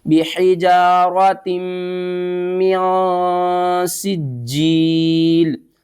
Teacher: ادغام مع الغنہ کرنا ہے، اس تا کو میم کے ساتھ ملانا ہے، میم مشدد ہے تو اس کے اوپر آپ نے غنہ کرنا ہے، اس کو آپ نے ہا نہیں پڑھنا ہے، اس کو تا پڑھنا ہے۔